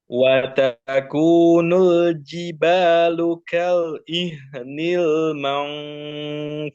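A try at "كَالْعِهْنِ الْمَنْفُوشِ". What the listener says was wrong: Nah, shin jangan lupa. Fush. Nah, terus haknya masih ada pantulan sedikit.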